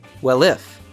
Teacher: These two words link, well if.